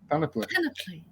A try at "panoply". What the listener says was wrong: Yeah, panoply. Not panoply. Because Portuguese and French, when we speak the vowels, we open the mouth to speak them.